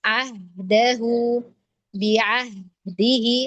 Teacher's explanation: huruf ha sukun yang dia basic-nya adalah rokhwah biasanya dia benar-benar harus dialirkan sampai ahd enggak boleh terputus sampai dal, karena hakikat dari huruf